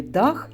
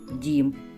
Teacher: звук д може бути твердим приголосним наприклад в слові дах